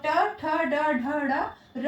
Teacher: इन सारे वर्णों का उच्चारण स्थान मूर्धा है और इन्हें मूर्धन्य वर्ण कहते हैं।